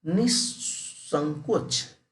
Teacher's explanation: विसर्ग का दंत स में परिवर्तन